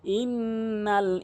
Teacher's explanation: গুন্না করতে হবে, নাকের ভিতরে নিতে হবে নুন সাকিনকে